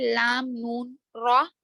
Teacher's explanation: زبان کی نوک اوپر کے تالو کو لگنے سے ادا ہوتے ہیں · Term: حروف طرفیہ